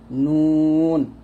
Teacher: নুন জিহ্বার আগা তার বরাবর উপরে তালুর সঙ্গে লাগবে